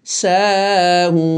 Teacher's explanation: মদ্দের পূর্বে, মদ্দের অক্ষরের পূর্বে অর্থাৎ ওয়াকফের ডানে, ওয়াকফের পূর্বের অক্ষরে অর্থাৎ ওয়াকফের ডানে মদ্দের হরফ আমরা পেয়েছি, সেই মদ্দের হরফটি হলো ওয়াও, যার কারণে আমরা মদ্দ আরজি সুকুন হিসেবে বা আলমাদ্দুল আরজুল সুকুন হিসেবে 2 থেকে 3 আলিফ পরিমাণ টেনে এখানে থেমে যাচ্ছি